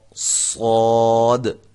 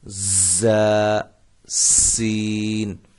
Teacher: صاد کی جو سیٹی ہے یہ موٹی ہوگی، زا اور سین ان کی سیٹیاں جو ہیں وہ سیٹی کی جو آواز ہے وہ باریک ہوگی